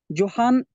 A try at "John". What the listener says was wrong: not Johan. It is John. J O H N is John. Okay.